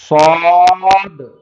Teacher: اب صاد جب پڑھیں گے وہی سین ہے، لیکن اس کو موٹی آواز میں نکالیں گے تو وہ بن جائے گا صاد